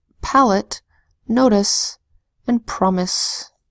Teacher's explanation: syllable is in an unstressed syllable and a multi syllable word a vowel sound will be a schwa sound instead of a long vowel sound